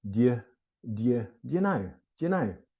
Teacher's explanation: Again, I don't recommend you really say this, but most native speakers are going to say it in this way. And do and you almost get contracted to become one word